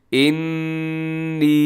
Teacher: نون کے اوپر تشدید ہے، غنے کے ساتھ تھوڑا سا کھینچ کے